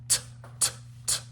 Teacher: There's a little bit of air afterwards, but not like a long gasping breath afterwards.